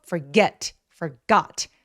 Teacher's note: 강세를 줄 때는 forget 이렇게 목소리가 올라가는게 아니라 소리가 또렷해지고 볼륨이 커진다고 생각하시면 돼요. 그래서 forget 아니고 forget forgot 하면서 또렷하게 소리를 직진으로 내 주시면 훨씬 더 자연스럽고 또렷하게 들리게 된다.